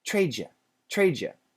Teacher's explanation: U, we have a Y sound. When a D is next to a Y, usually in America, it changes to a J sound, J. So trade you becomes trade you, but we don't say Jew, we say J, yeah.